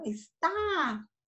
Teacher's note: A forte é o tá, não é? É a última, certo? E ela termina em A.